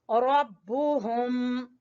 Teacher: रा को पुर पढ़ेंगे, ग्रीन कलर पुर पढ़े जाने वाला हरफ। रब्बुहुम, हा अक्सा हलक से, हलक के सबसे नीचे वाले हिस्से से हुम